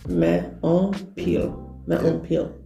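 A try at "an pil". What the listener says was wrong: No, not like Polish on. You see how I'm saying the word? But it's like you kind of cut it short, like Yeah. Yeah, exactly.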